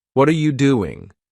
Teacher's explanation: with their voice Rising on what and falling on doing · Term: intonation